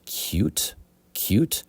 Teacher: in American English the T disappears or softens a little a little bit doesn't completely disappear but cute cute not cute